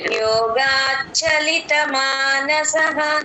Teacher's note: ఆ మహాప్రాణం చచ్ అని రాకూడదమ్మ యోగాచలిత ప్లేన్ గా మెత్తగా చెప్పాలి